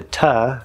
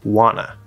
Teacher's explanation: two reduces to ta so we keep the uh sound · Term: both t's disappear